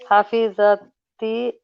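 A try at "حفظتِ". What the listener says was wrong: So remember the it's not hafidhati, it's with sukoon before the T. There's a sukoon. So hafidti, but with a sukoon before the T. Because you said hafidati, you said hafidati. It's not hafidati, it's hafidti.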